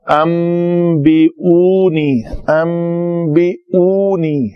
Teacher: اس نون کے بعد با آ رہا ہے تو اس نون کو میم سے بدل کر پڑھا جائے گا، تو یہ لفظ بنے گا ام بی ان، ام نون ہے تو انتا وہ ام ہو گیا، میم کا مخرج ہے، ہونٹوں کے خشک حصے آپس میں ملے تو میم ادا ہوتا ہے، تو یہ لفظ پڑھا جائے گا ام بی اونی، ام بی اونی۔